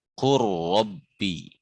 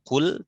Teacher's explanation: satu jenis karena lam sama ra itu sama di ujung lidah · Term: mutajanisain